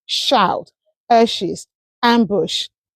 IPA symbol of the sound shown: ʃ